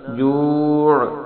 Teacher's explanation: جوع آخر میں عین کا آواز نکالنی، حمزہ کی آواز نہیں نکالنی